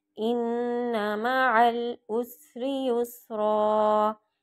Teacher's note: इन्ना पे गुन्ना होगा, नून और मीम पे शद्दा गुन्ना करना है